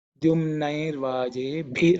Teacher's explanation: Dyumnair vaje bhi. This bhi is again fourth letter in the pa varga, so it has to be aspirated.